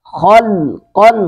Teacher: خا کو پر کر کے پڑھیں گے، قوف کو بھی پر کریں گے.